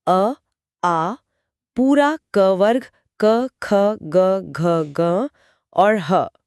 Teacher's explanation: कंठ यानी गले से निकलती हैं।